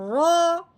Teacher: رو کے اوپر زبر ہے، رو کے اوپر زبر یا پیش ہو تو رو کو موٹا کر کے پڑھتے ہیں، رو کے نیچے زیر ہو تو رو کو باریک کرتے ہیں۔ اب رو کے اوپر زبر ہے تو اب ہم نے اس کو موٹا کر کے پڑھنا ہے